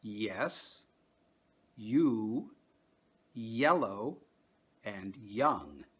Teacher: when you pronounce these words in English you are actually making two vowel sounds in a row and in each case the first vowel sound is the same